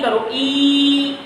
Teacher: ई वाले सारे के सारे अग्र भाग में आ जाते हैं